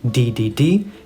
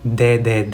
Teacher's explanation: of your mouth right behind the teth d d d and in Spanish your tongue actually touches your teeth